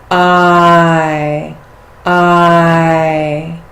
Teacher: Long I plus E, here we really feel the movement.